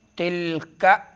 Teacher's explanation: لام زبان کی کروٹ جب اگلے 4 دانتوں کے مسوڑوں سے لگے